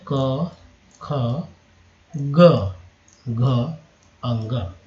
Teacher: उच्चारण स्थान इसका तालु है, एक्चुअली कोमल तालु है, और कंठ से बोलते हैं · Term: कवर्ग